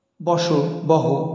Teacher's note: স স্থানে হ উচ্চারণ হয়, বস, বহ, এরকম।